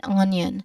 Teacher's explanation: there's no Y written in the spelling but that sound is naturally produced as part of the word's pronunciation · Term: hidden sounds